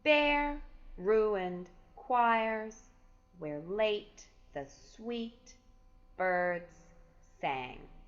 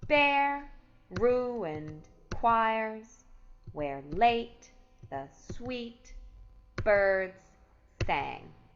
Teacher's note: the first foot has two consecutive stressed syllables